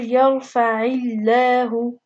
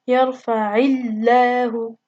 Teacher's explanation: because there's a kasra before the name of Allah subhanahu wa ta'ala, the lam has to be light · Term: light lam